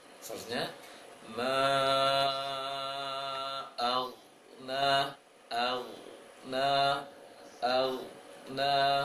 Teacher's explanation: maka seharusnya ditahan di ghain itu, jangan sampai dipantulkan suaranya. Aghna, jangan aghna.